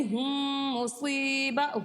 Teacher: میم ساکن کے بعد دوسری میم ہے تو یہاں پر ادغام شفوی ہو رہا ہے، اس لیے ہم اس یہاں پہ غنہ کریں گے اور یہاں پر دونوں میم کو ایک میم بنا دیں گے ، یعنی ہم مصیبہ، ہم اس طرح سے پڑھیں گے۔ جو